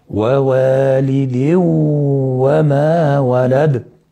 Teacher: لان الغنة ما زالت موجودة معانا، ادغام بغنة وهو ادغام ناقص